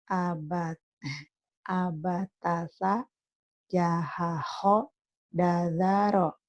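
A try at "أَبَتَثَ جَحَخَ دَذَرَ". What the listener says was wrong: Bagus.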